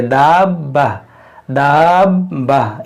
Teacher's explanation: बा मुशद्दद भी है, तो बा जो है 2 बार पढ़ा जाना चाहिए